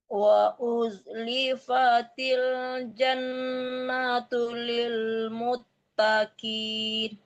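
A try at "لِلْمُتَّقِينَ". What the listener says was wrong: Lil muttaqin. Bu, kafnya kaf besar ya Bu. Lil muttaqin. Taqin. Jangan takin tapi taqin.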